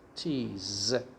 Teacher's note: remember s is pronounced as z here so it's like this cheese